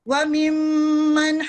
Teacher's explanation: وَمِمَّن پہلے آپ نے غنہ کرنا ہے اور اس کے بعد نون کی آواز کو ظاہر کرنا ہے، کیونکہ ہا یہ بھی جو دوسرا ہا بھی ہے یہ بھی ہلکی ہے، یعنی حروف الاظہار میں سے ہے، اس میں نون کی آواز کو ظاہر کیا جاتا ہے.